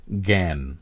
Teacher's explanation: শব্দের শুরুতে গ বা জয়জ্ঞ এর উচ্চারিত রূপ হয় গ চন্দ্রবিন্দু গ এর মতো